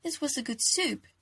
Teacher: it delved on the change of intonation in declarative sentences where speakers apply an upwards inflection in pitch towards the end of the sentence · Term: high rising intonation